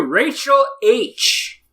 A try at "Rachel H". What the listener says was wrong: Rachel H, not racial H. Rachel. Say Rachel.